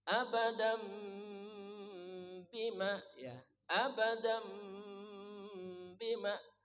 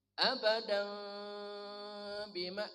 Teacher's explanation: Kedua mulut jangan dirapatkan. Buka sedikit ada celah udara. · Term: samar